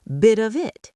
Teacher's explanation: The t in bit jumps to the O in of. The F in of, which sounds like a V, jumps to the I in it. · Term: Linking, linking